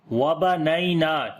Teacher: یا یہاں پر لین ہے نرم پڑھیں گے، نون کو لمبا کریں گے